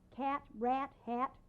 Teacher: the very American sound of a which is much narrower in character than ah it's what you might call brassier too but we use it